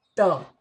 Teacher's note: दांत बोलते समय जब ध्वनि दांत से निकले तो समझना कि यह उच्चारण स्थान दंत है। जैसे त, आप जिह्वा को दांत से सटा रहे हैं, बिना जिह्वा को दांत से सटाए त बोला ही नहीं जा सकता, इसलिए इसका उच्चारण स्थान दंत है।